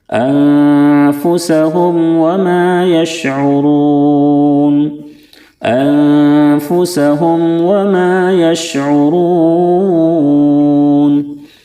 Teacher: میم ساکن کے بعد با اور میم کے علاوہ کوئی بھی حرف آئے تو میم میں غنہ بالکل نہیں ہوتا ہے، میم کو ظاہر کر کے فوراً آگے بڑھ جاتے ہیں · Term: اظہار شفوی